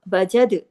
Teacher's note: वजद दाल पे कलकला होगा क्योंकि दाल कुतुब जद का लेटर है।